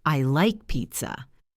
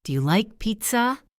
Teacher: The voice goes up on pizza.